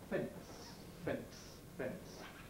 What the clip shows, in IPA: fens